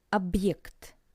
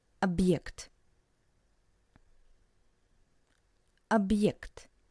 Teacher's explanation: you can hear this little pause between ob and ект. Объект. Ob, pause, ект. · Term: very short pause